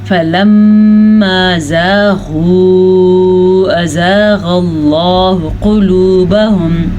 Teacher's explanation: میں نے میم پہ غنہ کیا کیونکہ میم کے اوپر شد آ گئی ہے۔ فَلَمَّا زاغوا، مت کا دھیان رکھنا ہے آپ نے، ازاغ اللہ، اچھا میں نے غین کو بھی پر پڑھا کیونکہ غین حروف مستعلیہ میں سے ہے۔